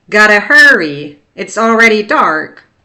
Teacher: Dark strong retroflex R